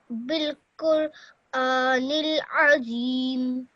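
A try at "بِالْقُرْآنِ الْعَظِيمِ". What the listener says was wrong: Perfect. Excellent.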